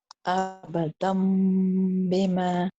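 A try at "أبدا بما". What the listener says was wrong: Now you have closed your lips completely. Try to keep your lips just a little bit apart from each other so that a small thin paper can pass through your lips. Abadan bima. That is not important. It's optional. Some people do choose to close their lips, and that's a choice. The important thing is to a meme sound and to nasalize the meme to make sure there is a nasal sound happening at the same time.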